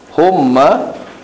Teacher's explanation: Ha mim mati depan hum. Mim mati jumpa mim di atas ma. Hum ma kan kena dengung. Mim mati jumpa mim. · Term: idgham mislain syari